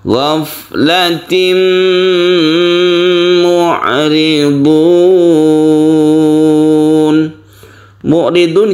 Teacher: tanwin bertemu dengan mim yang kita sebut dengan Idgham bighhunna idgham artinya masuk bunna artinya dengan dengung tanwin ini suaranya masuk · sebut dengan Idgham bighhunna idgham artinya masuk bunna artinya dengan dengung tanwin ini suaranya masuk ke mim sehingga timbullah tasdid mim karena ada tasdid di dalam huruf mim maka dibaca gunah